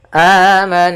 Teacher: ghunah yaitu suara nunnya kita tahan dulu suara n-nya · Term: gunah